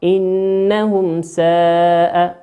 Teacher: تنطق كما هي بكل وضوح من غير إدغام أو إخفاء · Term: الإظهار الشفوي